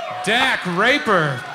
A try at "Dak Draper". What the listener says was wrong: Pronounce all those consonants, damn it.